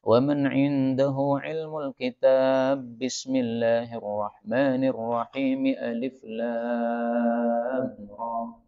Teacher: kalau disambung dengan Bismillah maka bah ketemu bah ini boleh idgham